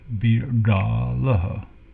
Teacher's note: this is a retroflex D sound, B da la. A long A here also.